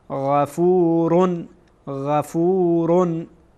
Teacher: و ما گفتیم که غین از ابتدای حلق ادا میشه.